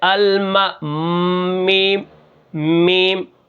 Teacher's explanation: میم کہاں سے نکلتی ہے، یعنی دونوں ہونٹوں کو ملانے سے، لیکن میم جو ہے یہ باہر کے حصے سے ادا ہوتی ہے، اس لیے اس کو کیا کہتے ہیں، بر، ٹھیک ہے، خشک ہونٹوں کے ساتھ سے ادا ہوتی ہے، جیسے الما، میم، میم، خشک ہونٹوں سے میم ادا ہوتی ہے، ٹھیک ہے۔